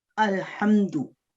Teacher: हा जो है हरूफ हल्की है, इसमें हलक से अदा करना है, और बाकी लाम के ऊपर जज़म सुकून है उसको हमने लंबा नहीं करना, मीम के ऊपर सुकून है उसको हमने लंबा नहीं करना।